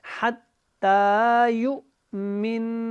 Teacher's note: یہاں پہ ہم نے وقف کرنا ہے تو اس کی زبر ختم ہو جائے گی، اور یہاں پہ ہم نے میم اور نون کو آپس میں ملا کے پڑھنا ہے، اور آپ نے یہاں پہ غنہ بھی کرنا ہے